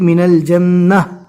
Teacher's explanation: رکنے کی حالت میں جزم والی ہا بنے گی